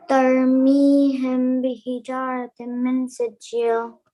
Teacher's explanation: Because we have a few, so we have this ikhfa shafawi here, the meme and the تَرْمِيهِمْ and bihijara in between. So here we'll pronounce it with ghunna for 2 counts with our lips barely touching